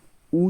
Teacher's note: ऊ जो होता है वह ओष्ठ से बोला जाता है